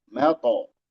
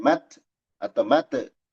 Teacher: Matla qalqalah to mato. Bukan mat atau mate, tapi mato.